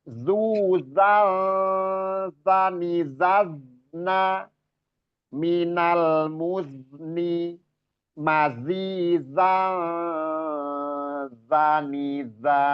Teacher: Terus zuzal, ini ikhfa ya. Ikhfa, jangan dibaca zuzan, zani, zazna, itu izhar kalau dibaca seperti itu.